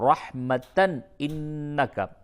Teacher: اس جگہ پہ اظہار ہوگا، تنوین کے بعد حروف حلقی آئے